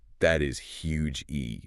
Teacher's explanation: But you can say, that is huge E, and it sounds powerful. You can stretch the vowel. It takes up space in the room, just like the object it describes.